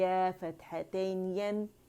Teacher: यानी या, शीन और जीम, ये हम कहाँ से अदा करते हैं? ये हम वसतुल लिसान से, ज़बान का जो दरमियानी हिस्सा ये वहाँ से अदा होता है